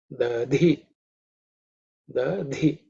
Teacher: again the fourth letter in the Tavarga, so it is with Mahaprana aspirated. So it should be Dhi, the Dhi, okay.